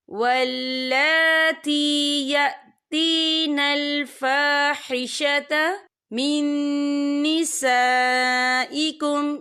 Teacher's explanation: या देखिए वल्ला, लाम के ऊपर खड़ी हरकत है, तो हम इसे 2 या 3 अदद के बराबर खींच के पढ़ेंगे।